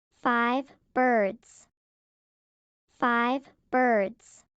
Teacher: The V in 5 and the B in birds are lip sounds. They connect.